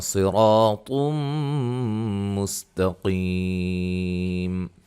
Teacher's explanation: صاد کو موٹا اور را کو موٹا